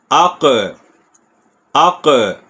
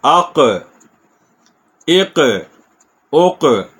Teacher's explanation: کاف پہ کے مخرج پہ زبان لگی پھر ہلکی سی اوپر اٹھے گی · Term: موٹا قاف